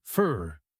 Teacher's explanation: The word for often reduces to fer. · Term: reduction